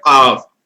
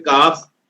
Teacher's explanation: اس کو گلے سے نکالیں گے قاف. اگر اسے کاف کہیں گے، منہ سے نکالیں گے کاف